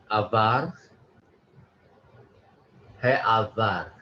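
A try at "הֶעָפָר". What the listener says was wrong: It's not avar, but afar. F sound. He afar.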